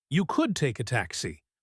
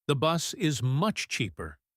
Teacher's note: She stresses could to offer an alternative, and much to emphasize the benefit.